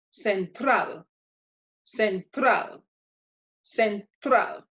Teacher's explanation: and it's not one of our seven letters therefore means that the stress is going to be on the last syllable